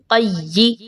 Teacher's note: क़ाफ या ज़बर क़य या ज़ेरी क़य्यी मजबूती के साथ मिलाएंगे क्योंकि या मुशद्दद है